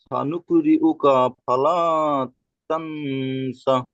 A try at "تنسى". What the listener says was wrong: তা নয়, সা টান হবে। তা সা টান দিতে হবে।